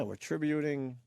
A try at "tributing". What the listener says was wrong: Tributing. There's no way to back out when you put the emphasis on the wrong syllable.